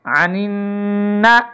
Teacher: غنہ کریں گے، یہاں پہ نون کو نون سے ملائیں گے